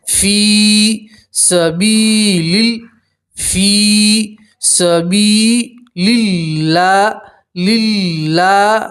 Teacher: اللہ کے لام سے پہلے زیر ہے تو اللہ کے لام کا باریک پڑھیں گے، پتلا پڑھیں گے